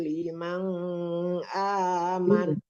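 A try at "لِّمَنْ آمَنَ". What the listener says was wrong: Nah, itu Ibu keseringan ya, limang nggak ada huruf di depannya huruf apa? Huruf hamzah ya, atau alif. Alif itu kalau udah ada harakatnya namanya hamzah.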